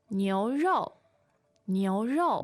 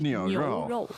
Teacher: The tones there are Second and fourth.